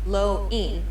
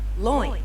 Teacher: notice how the o transitions into the eye very quickly it's almost like you're trying to merge the two sounds loin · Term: diphthong, diphthongs